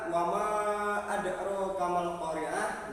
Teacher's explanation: di situ terdapat hukum bacaan qalqalah, di mana adro harus dibaca dengan tegas. Dal merupakan huruf qalqalah.